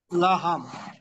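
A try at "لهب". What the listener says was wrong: লাহাব, শেষে বা, লাহাম না, মিম না, লাহাব।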